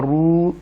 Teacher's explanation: یہ واو مدہ ہے، را پیشوا رو، تھوڑا سا ہم اس کو پرولونگ کریں گے، لٹل بٹ ناٹ مور